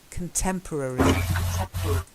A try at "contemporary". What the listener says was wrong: Contemporary. Contemporary. Contemporary. Contemporary.